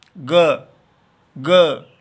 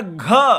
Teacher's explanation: अगर ग बोलेंगे तो अल्प प्राण है, और इसका मतलब इसी स्थिति में पीछे से अधिक वायु छोड़ी जाएगी, तो ग निकलेगा जिसमें नाद है, घोष है, ग, और घ वो महाप्राण है, लेकिन संवार, नाद और घोष है।